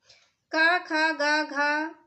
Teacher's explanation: इनका उच्चारण स्थान कंठ से होता है तो यह कंठ ध्वनियां है